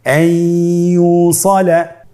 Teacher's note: ইয়া হরফটি হলো ইদগামে বাগুন্নার হরফ। তাহলে নুনকে আমরা পরবর্তী হরফ ইয়ার সাথে মিলিয়ে গুন্নার সহিত পড়ব।